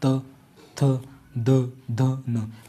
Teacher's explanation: आपकी जो जीव है ना वो दांत को टच कर रही होगी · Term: दंत व्य वर्ण, दंतव्य वर्ण